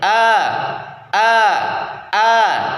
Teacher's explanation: posisi lidah jangan sampai naik mendekati langit-langit atau istifal ya posisi lidahnya enggak boleh sampai nempel ke langit-langit a gitu